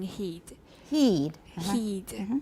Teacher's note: the tongue is fairly close to the roof of the mouth